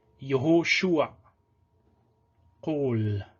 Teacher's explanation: holem, which is o, and just like the seré, it is also always long because it does not occur in unstressed closed syllables.